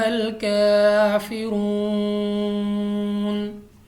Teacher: اس کے بعد کاف پر بھی کھڑی زبر ہے، ہم نے اس کو لمبا کرنا ہے 2 الف تک۔ واو ساکن سے پہلے پیش، واو مدہ، اور اس کے ساتھ ساتھ را کے اوپر پیش ہے، تو را کو ہم نے پر پڑھنا ہے